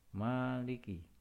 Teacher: Adapun cara membaca dari mat tabi'i ini adalah dibaca panjang dua harokat atau satu alif